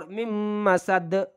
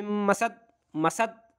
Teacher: دال کہہ کر قلقلہ ہوگا فور ممسد۔ اگر ہم کہیں ممسد مسد تو یہ غلط ہے، ممسد۔